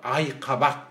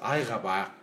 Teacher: үнді дауыссыздан кейін келген қ, к дыбыстары ғ-ға, г-ға ауысады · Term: прогрессивті ассимиляция